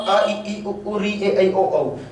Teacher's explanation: तो अ का कंठ है, ई का तालव्य, उ का ओष्ठ, री का मूर्धन्य, ए ऐ ओ औ। इसका मैंने अगली स्लाइड में बताया था कि हम दोनों ही चीजें प्लस करके बनाएंगे, ए और ई का बराबर कंठ तालव्य, कंठोष्ठ कंठोष्ठ। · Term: उच्चारण स्थान